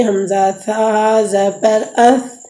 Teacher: یہ چوتھا مخرج ہے ثا کا، تو زبان کی نوک جب اوپر کے اگلے دونوں دانتوں کی جڑ کی طرف والے حصے سے لگے تو اس سے ثا ادا ہوتی ہے۔ ثا کو آپ نرم کر کے پڑھیں گے، حمزہ ثا زبر اث۔